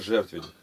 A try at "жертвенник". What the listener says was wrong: То ли все равно тебе, или еще... Я уж не говорю, столько слов, окончание прям заглатываешь.